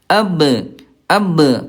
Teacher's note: Qalqalah tu memantul. Pantulkan ni Bunda kalau sukun.